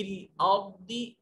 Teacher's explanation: रा साकिन है, ये मोटा और पुर करके पढ़ा जाएगा।